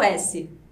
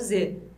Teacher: faz o s, não treme, agora faz o z, treme pra caramba. A parte da língua pra fora fica idêntica, é só a vibração mesmo que muda.